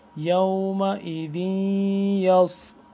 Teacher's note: یا واو زبر یو، میم زبر ما، یوم، یوم، حمزہ زیر ای، یومئی، ذال یا دو زیر ذی، ذال یا دو زیر ذی، یومئذی، یا صاد زبر یس، یومئذ یس، سین سی ڈی کی آواز اور صاد موٹا پڑھنا ہے، سین سے جدا کر کے پڑھنا ہے